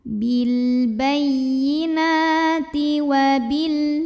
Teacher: Karena ada baris fathah yang tegak di atas huruf nun. Cara membacanya dipanjangkan nunnya 2 harokat. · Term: mad tabi'i